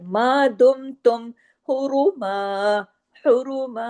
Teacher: वह हुर्रिमा अलैकुम, अलैकुम देखे आइन को आइन की तरह, लई ये याइलीन है, अलैकुम सईदुल, स्वाद को हैवी भी पढ़ना है, याइलीन भी करना है, सईदुल बर्री सख्ती से जुड़ेगा, रा और बारीक रहेगा, मा दुम तुम, मा मीम के साथ अलिफ मद्दा है, जो कि मीम बारीक हर्फ है, तो यहाँ अलिफ भी बारीक ही होगा आवाज के लिहाज से।